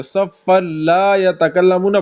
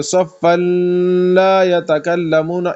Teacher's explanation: صفن میں نون لام میں کنورٹ ہو گیا، صفن لا، تو اس میں ہم غنہ نہیں کریں گے